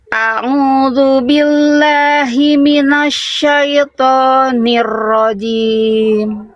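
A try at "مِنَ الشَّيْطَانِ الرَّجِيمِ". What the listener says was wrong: Ronya sama to-nya nanti harus latihan huruf tebal lagi, pangkal lidahnya harus diangkat ya. Ro minasyaitonir rajim. Nanti dilatih huruf-huruf tebalnya ya. Karena huruf tebal itu tanpa pangkal lidah pasti suaranya lebih terdengar kurang berbobot, kopong bunyinya to, ro gitu ya.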